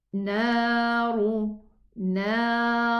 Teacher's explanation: as we know the ra fatha is elevated and the ra dhamma is elevated. Otherwise, if it has a sukoon, we are going to look at the letter before the ra, and we act accordingly.